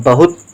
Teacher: बहुत तो छोटे ऊ का उच्चारण रहेगा क्योंकि हु कम देर के लिए है। बहुत ता के साथ कोई उच्चारण नहीं तो ता खाली, शब्द हो गया बहुत।